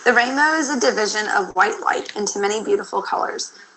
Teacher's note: she has some mild roughness she does not seem to be speaking with very much airflow and her resonance is kind of posterior in her throat